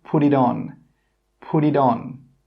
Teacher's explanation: I don't say put with a T, I say pud with a D sound at the end. I have changed that T sound to a D sound.